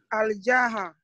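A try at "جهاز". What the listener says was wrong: We don't have Alif Lam here. We have just Ja'a.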